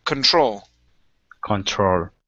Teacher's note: the stress is at the very end